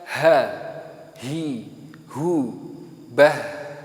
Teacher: Kalau ha dia mahmusah, kemudian rehwah. Rehwah berarti dia suaranya mengalir, mahmusah dia juga nafasnya mengalir. Ketika saya mengatakan ha, hi, hu, bah, ketika saya mengatakan bah, maka secara nafas dia keluar, secara suara dia juga akan mengalir.